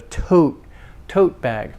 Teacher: is not released tote not tote but tote tote not released no breath release on the second t on the final t